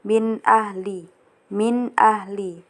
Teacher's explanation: Jadi di ayat 1 ini terdapat hukum izhar halqi, yaitu di bagian min ahli, karena nun sukun bertemu hamzah. Jadi di sini min ahlinya itu harus dibaca jelas seperti min ahli, min ahli.